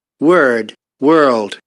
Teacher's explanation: So on the left picture we have like a rhoticized vowel, and to the right we have a rhotic sound that causes this increase of third formant